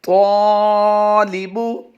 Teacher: हुरूफ मुस्तअलिया से होने की वजह से पुर पढ़ा जाएगा और इसकी निस्बत से अलिफ भी पुर पढ़ा जाएगा